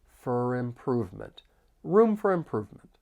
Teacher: the word for often gets reduced, and that vowel sound's going to change slightly. So instead of for, it's going to sound like fur. · I can link the final consonant sound with the vowel sound in improvement.